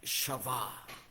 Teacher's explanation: la B labiodental, la B de vaca, dos veces, A-H al final, Shavá.